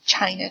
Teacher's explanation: in China the stress is on the first syllable